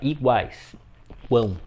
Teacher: temos uma vogal no meio e nos extremos duas semivogais. Uma semivogal em cada lado. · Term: tritongo